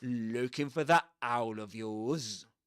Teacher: And there's an special emphasis at the beginning of the word owl. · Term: glottal reinforcement